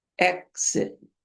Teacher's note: It's a K and an S. The X is two consonants combined. When you approach it, it's like K. But when you pass it, it's like an S.